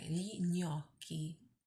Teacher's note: you get this G and an N makes a ñ sound